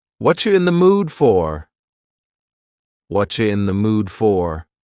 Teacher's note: Here the word you has been reduced to cha. Cha. This is extremely common in spoken English that the word you gets changed up in a lot of ways. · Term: whatcha